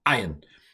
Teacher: So it's a strong glottal stop.